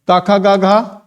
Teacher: जहां पर वायु क्या हो रही है किसी अंग को स्पर्श करते बाहर आ रही है वो क्या है स्पर्शी व्यंजन है